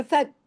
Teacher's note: मुंह हंसने की तरह खींचे, फौक नहीं कर देना, हैवी हो जाएगा काफ